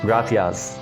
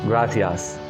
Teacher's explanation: TH sound for Spain mainland, gracias, and S sound for Latin American countries, gracias.